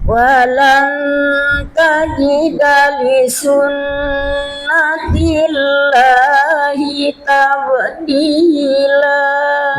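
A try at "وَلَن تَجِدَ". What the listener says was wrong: Gunanya ada walan tajida itu, tapi samarnya belum dapat gitu. Walan tajida. Ada samarnya. Wala tajida. Wala takuna gitu. Jadi disamarkan.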